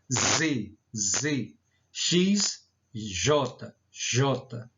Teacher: sempre são pronunciadas a partir da fricção do ar em um obstáculo fixo